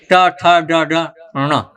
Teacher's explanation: तो अणा का जो उच्चारण होता है मूर्धा से होता है, पीछे से